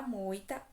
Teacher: primeiro eu tenho a vogal o depois a semivogal i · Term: ditongo decrescente